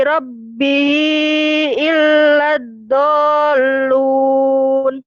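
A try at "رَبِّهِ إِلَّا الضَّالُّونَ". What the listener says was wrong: Lo-nya bulat. Mir rahmati rabbih illa dallun. Mir rahmati rabbih illa dallun. Illa dallun. Illa dallun. Sama seperti walam dallin itu.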